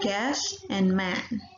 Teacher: So it means that it's getting opened. Open front area and the lips are slightly spread